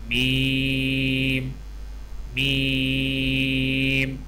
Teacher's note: میم کی ادائیگی میں ہونٹوں کے خشک حصے کو قدر نرمی سے ملا کر باریک آواز میں پڑھیں